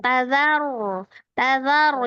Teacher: Zanya tipis ya. Jangan terpengaruh dengan ronya yang tebal.